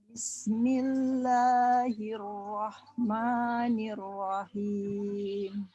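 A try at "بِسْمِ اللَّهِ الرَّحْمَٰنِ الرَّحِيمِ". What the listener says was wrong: Baik, begitu mengucapkan Rahman, haknya dia seperti tersenyum. Bismillahirrahmanirrahim. Gitu ya, jangan roh. Tapi rahma diulang.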